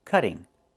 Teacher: Move the stress to the first syllable, cut. Not cutting, but cutting.